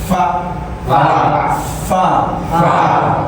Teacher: Bibir bawah bagian dalam bertemu ujung gigi atas. Bertemu ujung gigi atas.